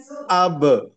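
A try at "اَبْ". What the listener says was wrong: Apa namanya masih tertahan sedikit. Harus lebih rileks. Abe, aje, ade.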